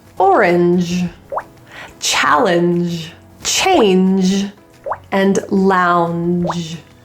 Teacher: These all have N with a J or soft G sound. So these are exceptions that you should be aware of and not to overgeneralize this sound in the middle of words and words that end in E.